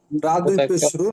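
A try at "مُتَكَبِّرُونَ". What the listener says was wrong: রা কেন হবে? রা তো হবে না, র। র র দুই।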